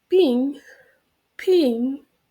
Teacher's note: in the word ping, the P sound is aspirated. It means that we let a little part of air free when we pronounce the letter P.